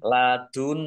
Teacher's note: Nun tasdid dibaca gunah atau mendengung ditahan dua harakat